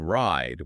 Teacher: with ride, it's that full I sound and it's held for longer. It's more open sound. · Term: long i